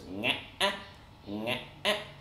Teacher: glottal stop tone that kind of goes in a similar fashion to the question tone, but you get this kind of break so that it goes nga-ah, nga-ah, and we're looking at this diagram.